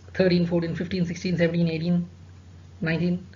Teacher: all these teens, they take stress on the second syllable